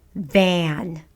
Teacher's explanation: lips kind of intense into a smile and you lower your jaw ah it's a low front vowel